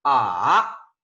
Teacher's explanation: es este tono es un tono que esté empieza a digamos un tono grave verdad luego baja mucho más y sube otra vez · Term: tercer tono